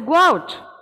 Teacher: So there is a linking W sound.